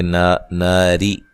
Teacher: ہے، نا الف مدہ ہے، را کو باریک پڑھیں گے، ناری را کے نیچے زیر ہے، اس وجہ سے را کو باریک پڑھا جائے گا